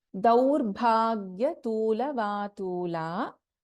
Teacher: Bha is a Mahapranakshara here.